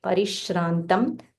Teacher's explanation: Then Parish, the sh, this is called Talavya sh, the tongue touches the upper palate close to your teeth